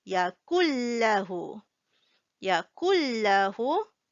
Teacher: this Nun sound will disappear. There is no N sound here. What happened is the kaf just joined with Lam. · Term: skip the sound of N